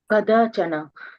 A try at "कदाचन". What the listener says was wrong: Okay.